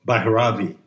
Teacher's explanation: I believe the correct pronunciation puts the accent on the first syllable.